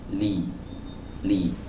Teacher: hati-hati jangan sampai dibaca dengan tebal · Jadi yang melekat ke langit-langit bagian depan itu bukan hanya kepala lidahnya gitu, tapi disertai juga dengan sisinya · dia adalah huruf yang keluar dari sisi lidah atau tepi lidah atau pinggir lidah bagian depan ya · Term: huruf lam